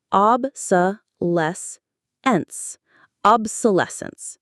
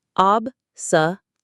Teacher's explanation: The main stress is on that less syllable.